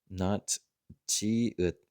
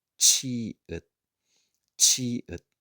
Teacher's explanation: It's quite soft and standard, but then here, because it's got this little extra guy on top, this is the strong CH, the aspirated. It's got a bunch of extra air coming out. So it will be not chi-ut, but chi-ut, chi-ut.